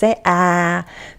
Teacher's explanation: is a very open vowel sound because the jaw is at its lowest position. This is the sound that the doctors or nurses tell you to make when they want to look in your mouth, and they say ah, because that's the sound that helps our mouth open so they can see inside.